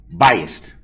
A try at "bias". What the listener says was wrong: No, bias. BIAS. Not. There's no T at the end.